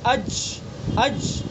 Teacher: جیم کو ہم ادا کریں گے تو اس کے اندر آواز ایک دم بند ہو جائے گی اور اس کے اندر ایک بلندی ہوگی، اج، آواز کے اندر ایک بلندی ہوتی ہے۔